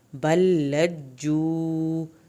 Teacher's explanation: بل لام کی شد پڑھنی ہے، جیم کی شد بھی ادا ہوگی اور واو ساکن کو کھینچ کے پڑھنا ہے